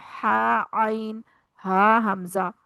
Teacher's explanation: हलक से अदा होने वाले हरूफ हैं गैन, खा, हा, आइन, हा, हमजा